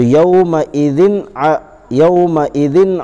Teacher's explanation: دو زیر کی تنوین کے بعد حروف حلقی کے 6 حرفوں میں سے عین آیا ہے، اس لیے اس کو بغیر غنے کے جلد پڑھیں گے